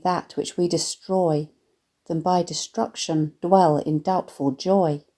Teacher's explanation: note the alliteration of the Heavy plosive D Sounds